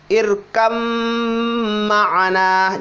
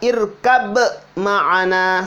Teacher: Jadi ba yang pertama itu dileburkan masuk ke mim. Irkam ma'ana, bukan dibaca irkab ma'ana, salah.